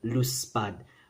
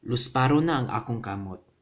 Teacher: the D changing to the R, the D changing to the R sound